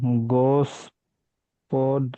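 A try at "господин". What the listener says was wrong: আ উচ্চারণ হবে, গাছপাদিন। বলছি যে লাস্টে দেখেন দিনের উপরে জোর পড়ছে,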